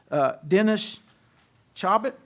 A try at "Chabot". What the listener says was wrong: No, but close enough. Very close. T silent. It's French in origin, so.